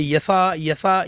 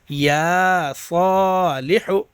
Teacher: یا کو نہیں کھینچتے ہیں، یسا پڑھتے ہیں